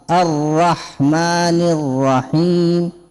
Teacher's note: إذا هذه خلط حرفين، حرف الواو مع حرف الراء. إذا الراء تخرج من طرف اللسان جان مع اللثة